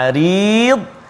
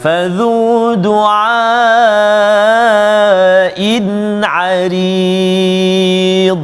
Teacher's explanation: Pada dad tu jangan meletup ataupun jangan melantung sampai qalqalah. Qalqalah. Jangan, sebab dad tak termasuk dalam huruf qalqalah.